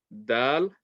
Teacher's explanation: the tip of the tongue touching the tip, touching between the gums and the top teeth. Same makhraj as ta.